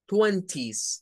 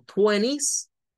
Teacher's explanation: es con la t Twenty Esa es la pronunciación estándar pero la pronunciación norteamericana quita el sonido de la t · es por la regla esa de la nt verdad de que cuando hay una n delante de la t la te no suena pero eso es American english eso es muy pronunciación Norteamérica si